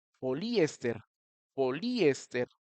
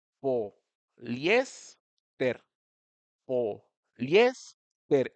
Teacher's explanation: Se escucharía como poliéster, poliéster, y no se pronuncia así, es poliéster, poliéster. Esa I y esa E, cuando las pronunciamos bien, se genera como un diptongo. Un diptongo, de nuevo, es cuando tienes dos vocales pegaditas en la misma sílaba.